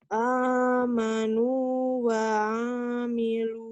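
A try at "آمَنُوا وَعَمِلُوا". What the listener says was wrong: A-nya pendek. A-nya panjang. Tapi yang kamu bacakan wa'a malu A ini pendek. Kamu berpikir karena ini barisnya panjang ya?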